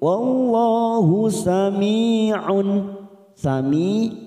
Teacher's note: kasrah bertemu ya sukun 2 harakat · jalalah yang didului fathah kita baca tafkim